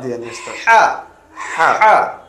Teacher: এটা মস্কের মাধ্যমে বারবার বলার মাধ্যমে গলার মাঝখান থেকে একটু চাপ দেয়া, হা, হা, হা, গলা থেকে।